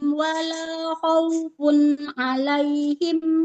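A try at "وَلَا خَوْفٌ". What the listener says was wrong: Wala khaufun. Khaufun. Tadi huruf ho-nya jangan seperti hak ya, tidak khaufun. khaufun harus terasa di tenggorokan paling atas.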